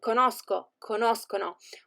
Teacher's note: the sound of c and g changes and becomes hard before the endings of the first person singular and the third person plural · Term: hard sound